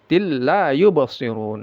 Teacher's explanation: La panjangnya dua harakat mad asli.